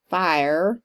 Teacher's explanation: I pronounce it with 2 syllables, fire, being a native Texan.